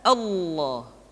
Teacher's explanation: lam yang terdapat pada lafal jalalah tersebut mesti ditebalkan Allah kecuali kalau lafadz Allah didahului oleh huruf yang berharakat kasrah